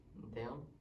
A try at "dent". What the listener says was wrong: You're taking away the L and replace it with the N. Dent. It was dent, actually.